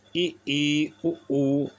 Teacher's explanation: समवृत स्वर ई, उ, मुखद्वार लगभग बंद रहता है, बहुत थोड़ा खुलता है